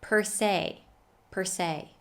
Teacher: in spite of being spelled with an e is pronounced with a long a sound · the first word per is pronounced with the schwa sound plus an american r sound our favorite so the schwa plus r is a strong sound